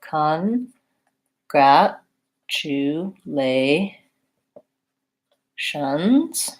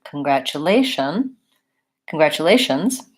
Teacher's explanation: congratulations has stress on the second-to-last syllable so con grat Chu Lai shun and so my stress is